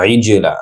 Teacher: আইন ডিপ হবে, আইন জিনের সাথে যুক্ত হয়ে জিমে কলকলা হবে